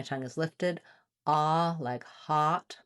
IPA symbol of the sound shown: ɑ